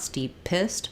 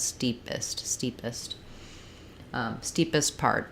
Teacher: that P is not going to be released and not going to be a burst of air it's going to be unaspirated